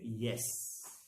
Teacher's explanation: Only one palatal sound we have. The active articulator is the front of the tongue and hard palate is the passive articulators. The sound is y as in yes.